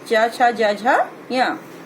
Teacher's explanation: इन वर्ण का उच्चारण हम तालु के माध्यम से करते हैं, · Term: चवर्ग